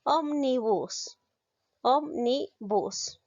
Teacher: la mayor fuerza de voz recae la ante penúltima sílaba por lo tanto es esdrújula